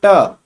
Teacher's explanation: ऐसे मूर्धा, जो हमारी मूर्धा का मतलब है जब हम ट बोलेंगे ट, तो ट हमारे दांतों से नहीं टकराएगी, ट हमारी जो जीभ है वो हमारे छत पे पहुंच जाएगी, जो मुख की जो छत है उस छत से टकराने लगेगी ना।